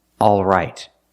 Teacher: The first vowel is the sound ah, like in words call and ball.